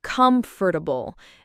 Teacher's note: Many people uh sometimes add extra syllables. It's actually usually said with three syllables, not four.